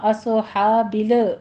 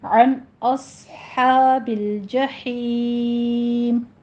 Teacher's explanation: لام کو سٹاپ کیجئے، اس کے اوپر قلقلہ نہیں کرنا